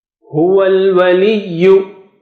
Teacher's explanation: So wa is just joining with lam. You don't look for that alif or hamzatul wasl.